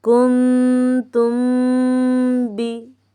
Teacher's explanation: میم ساکن کے بعد با آ گیا حرف با، تو یہاں پہ اخفاء کریں گے یعنی غنہ کریں گے۔